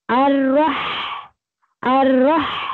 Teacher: रॉ को मोटा पढ़ा जाएगा और मोटा करते हुए हम हा में उसको मर्ज करेंगे क्योंकि साकिन है